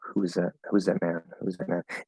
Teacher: i'm not saying the th because i'm connecting the z usually when you have z plus um voice th between two words the z will just take over and the th will disappear because they're very similar sounds very close to each other so